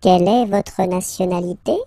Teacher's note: in French, we tend to raise the voice at the end when we've got this little point d'interrogation. If it's a question, don't be afraid to go like, yoop, and raise a little bit at the end.